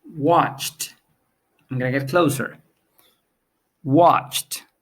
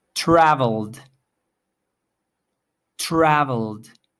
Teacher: we have watched with a T ending traveled with a D ending